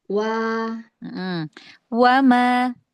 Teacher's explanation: Ya, wa kedengaran. Wa di ujung bibir tuh kedengaran huruf wa-nya.